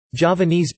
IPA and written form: dʒɑːvəˈniːz (Javanese)